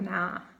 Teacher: the diphthong ow is replaced by a. For example, now they pronounce like na.